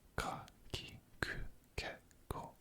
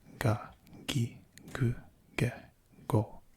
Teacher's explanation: all of the ka sounds, the K sounds, will instead make G sounds. So instead of ka, ki, ku, ke, ko, you would have ga, gi, gu, ge, go.